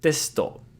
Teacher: we can devocalize the su in the middle and it makes testo